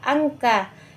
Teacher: ikhfa hakiki yang dibaca samar-samar, yaitu hurufnya nun mati bertemu kaf